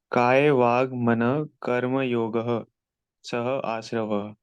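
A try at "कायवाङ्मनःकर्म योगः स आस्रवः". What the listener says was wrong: देखो स है, वो सह नहीं है, स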